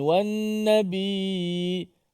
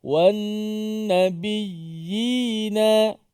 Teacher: Kita kemaskan sebutan itu supaya ya yang berbaris di bawah tu bunyi yi. Dia tak bunyi wan nabi, hanya kita menekan suara saja.